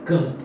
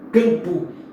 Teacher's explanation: Este M, ele não é pronunciado como fonema me. Ele está aí tão somente nasalizando a vogal anterior. Então aqui é como se esse A tivesse um tio em cima.